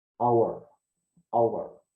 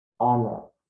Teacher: We don't need to pronounce the H. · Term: silent H